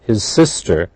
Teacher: The Z and the S are blended.